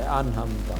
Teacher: جس طرح انحمدہ، عین آ گیا ہے، نون کے بعد عین آ گیا ہے تو آپ نے نون کو کلیئر کرنا ہے، پڑھنا ہے